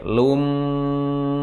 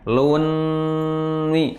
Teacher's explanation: mim Idham tadi artinya apa masuk bighunna dengan dengung dengan dengung jadi ketika masuk langsung didengungkan ya dengan merapatkan bibir Lumi tidak luni tidak mati n tetapi mati m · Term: Idham bighunah